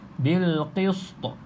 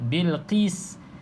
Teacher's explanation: Pastikan huruf sin ni nipis. Kalau tebal dia jadi huruf sad. Bil qist. Jadi nipiskan.